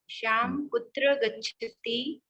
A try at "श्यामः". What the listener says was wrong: श्यामः विसर्ग लगाइए।